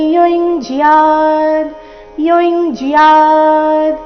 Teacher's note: ಯ ಮೇಲೆ ಆಘಾತ ಯಕ್ರಿಯಹ ಉಪವಿಶ್ಯಾಸನೆ ವಿ ಮೇಲೆ ಆಘಾತ ಉಪವಿಶ್ಯಾಸನೆ ಯುಂಜಿಯಾದ್ ಯುಂಜಯಾದ್ ಯು ನಂತರ ಬಂದಿರುವ ಅನುಸ್ವಾರದ ಉಚ್ಚಾರಣೆ ಚ ವರ್ಗದ ಅನುನಾಸಿಕ